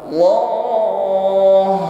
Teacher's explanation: Nampakkan huruf ha-nya ada sifat rakhawah.